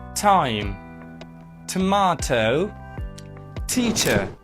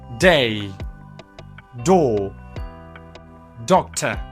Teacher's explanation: T and D are like twins, okay? Same place, same manners, the only major difference is voice, obviously.